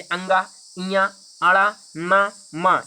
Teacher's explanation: ये सब नाक की सहायता से बोले जाते हैं